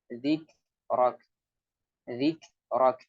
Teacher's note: Di sini ada syiddah dan hams. Suaranya tertahan, kemudian setelah tertahan ada aliran udara. Jadi dia syiddah dan hams. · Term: huruf kaf